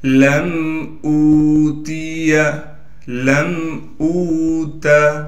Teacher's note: لام کو میم سے ملا دیں گے اس لیے کہ میم ساکن ہے، بغیر غنہ کے ملانا ہے